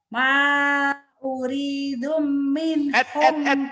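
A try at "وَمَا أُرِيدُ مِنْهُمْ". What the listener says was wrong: Jangan uridum. Kenapa uridum? Gak ada tanwin. Ma uridu minhum. Jangan uridum. uridum itu ada tanwin di sini. Ini kan gak ada. Ma uridu minhum. Jangan uridum.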